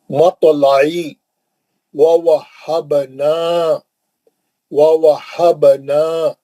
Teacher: ووہبنا، با پہ خلخلہ کریں گے